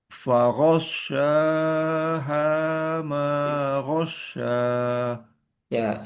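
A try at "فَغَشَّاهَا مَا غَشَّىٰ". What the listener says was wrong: Sinya kurang menyebar ya.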